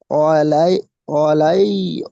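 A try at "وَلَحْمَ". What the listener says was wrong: ওয়ালাই, ওয়ালাই কেন হবে? ওয়ালাহ, লাম হা জবর লাহ পর্যন্ত আপনি।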